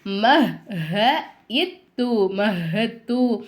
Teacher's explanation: சத்து பெற்ற எழுத்துக்கு முன்னாடி உள்ள எழுத்துக்கு சுக்குன்னு வந்திருக்கிறதுனால இந்த தால் உச்சரிப்புல வராது இந்த ஹவ கொண்டு வந்து இந்த தால ஜாயின் பண்ணி மஹ் ஹ இத்து